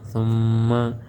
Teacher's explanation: اس میم کے اوپر تشدید ہو، جس نون کے اوپر تشدید ہو وہاں پر غنہ ہوتا ہے. ہم آواز کو ایک الف کے برابر لمبا کرتے ہیں اور ناک میں لے کر جاتے ہیں